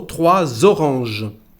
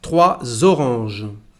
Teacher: we don't pronounce the letter S, but we pronounce it when we have a vowel. So 3 oranges, like a Z.